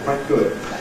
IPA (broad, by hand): kwaɪt ̚